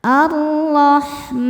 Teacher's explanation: Mad tabi'inya adalah fathah panjang pada huruf mim, kemudian huruf yang disukunkannya adalah huruf nun. Maka mimnya panjang, boleh 2, boleh 4 ataupun 6 harokat asal konsisten dalam sekali baca. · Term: mad arid li sukun